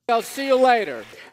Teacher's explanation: Do you hear that peak stress on the words see and later? Specifically, the syllable lay.